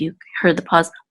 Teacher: when you say Israel you want to make sure not to slur ra and L together